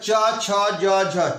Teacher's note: च छ ज तालु वर्ण, तालु में टच होता है, तालु वर्ण